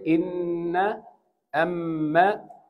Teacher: We said that noon and meem with shadda, we stretch it. We call it long ghunna.